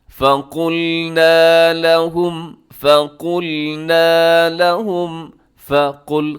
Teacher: قاف موٹا ہے، باقی سب حروف باریک ہیں۔